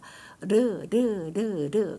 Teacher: 르는 혓바닥 설첨이라서 혀 끝머리가 경구개 쪽을 살짝 닿았다 얼른 띕니다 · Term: 설첨음